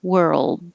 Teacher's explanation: Hold the tongue in the L position for a little longer so that we can hear the L because you do have to hear the L.